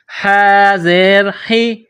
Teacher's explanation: گلے کے درمیان سے ح کو نکالیں گے، ح زیر حی، والصبح، والصبح۔